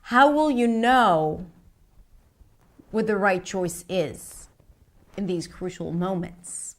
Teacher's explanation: It does sound like I'm ending it. Rising, falling intonation. The pitch falls at the end in these crucial moments.